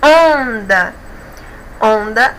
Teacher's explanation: a penúltima sílaba é a mais forte termina em a não é acentuada é paroxítona mas não é